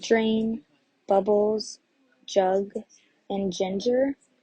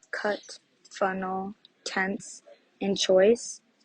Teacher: if you say all of the first parts of the words then you should feel your voice vibrate or your throat vibrate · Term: voiced